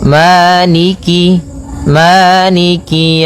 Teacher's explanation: kasrahnya juga disempurnakan. Jangan sampai dibaca dengan e, tapi dia I.